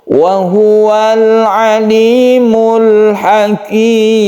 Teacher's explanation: Alif lam ini disebut dengan al ta'rif yang bertemu dengan huruf apabila dia sukun lam ini disebut dengan idhar qamariyah yang artinya kita harus jelas membaca lamnya tersebut